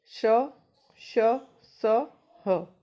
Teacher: जिन व्यंजनों के उच्चारण में दो उच्चारण अवयव इतनी निकटता पर आ जाते हैं कि बीच का मार्ग छोटा हो जाता है, तब वायु उनसे संघर्ष करती हुई निकलती है। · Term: संघर्षी व्यंजन